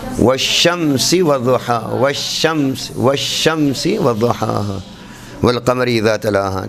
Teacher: شین میں ہم دیکھتے ہیں کہ یہ درمیان تالو سے زبان کا درمیان نہیں ٹکرا رہا بلکہ زبان کے کنارے اٹھ کے ٹکرا رہے ہیں